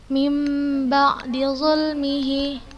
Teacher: Mim ba'. Ustazah ubah suaranya menjadi mim. Kemudian ustazah gunakan gunnah. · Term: iqlab